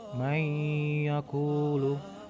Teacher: bacaan tersebut dibaca dengan dengung yang panjangnya ada 2 harokat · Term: idgham bi ghunnah